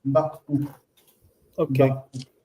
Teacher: the aleph doesn't close the syllable? The aleph is quiescent. So quiescent means that it disappears.